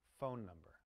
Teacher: In a two-word pair, we stress the first word. The first word sounds stronger. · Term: Stress in two-word pairs